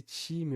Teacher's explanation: Então, a palavra time, para quem tem o sotaque típico de algumas zonas do Brasil, a maior parte, por exemplo, São Paulo, Rio de Janeiro, esse som vai ser africado, vai ser time, vai ser bem cheio, né?